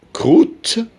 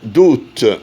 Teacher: Ou est long dans croûte, bref dans doute.